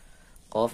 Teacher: qaf ini pangkal lidah paling belakang